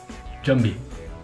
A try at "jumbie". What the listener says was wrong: Good pronunciation.